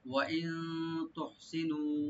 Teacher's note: ওয়া ইন এখানে নুন সাকিন আমরা ইখফা করব